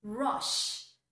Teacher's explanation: We have an sh, the shh sound, which is of course unvoiced.